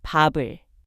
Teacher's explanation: the final consonant moves forward and is read as the next syllable's initial sound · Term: liaison rule